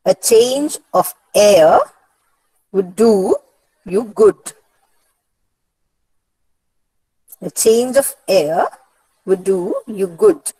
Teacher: So in this utterance or this sentence, the first article is not stressed. The word change is stressed. The word off is not stressed. The word air is stressed. · the first article A is not stressed, unstressed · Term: rhythm